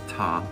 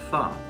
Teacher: Both are pronounced with the teeth, but T cuts off the sound, and tha allows the airflow to continue.